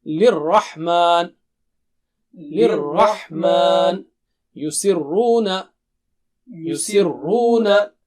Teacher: Ra has shadda, so both sounds of Ra will be thick.